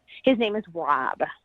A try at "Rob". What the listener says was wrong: Yeah, it sounded like that. Wob.